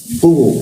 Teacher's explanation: Wa id ku masuk ke ku di mana posisinya di siku tenggorokan, lidahnya dinaikkan sehingga rongga udara terkunci dan tidak ada hembusan udaranya